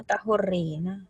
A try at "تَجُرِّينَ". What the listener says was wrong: Tajurrina. Itu jim namanya. Kan itu jim namanya.